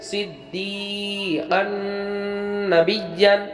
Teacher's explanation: دو زبر تن بعد نون آیا تو یہاں پر ادغام بالغنہ ہوا جہاں ہم غنہ کے ساتھ پڑھیں گے